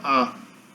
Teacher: A posição central, mais perto do céu da boca